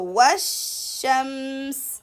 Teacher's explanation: So washamsa, as you see here, the sign for that, the sheen mushaddad, and no haraka on lam, no vowel on lam, means that there is no need to read the lam, and we're going to shift from waw directly to the sheen because hamzatul wasl, we will skip it as well because we did a letter before, and this is hamzatul wasl. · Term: lam shamsiyya